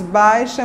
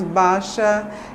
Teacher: A gente tende, em muitos dialetos do português brasileiro, a fazer um monotongo.